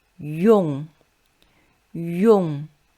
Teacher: You should voice yu, keep the tongue position to then pronounce the velar nasal. So it's yong.